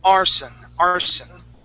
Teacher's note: that s is going to be a voiceless s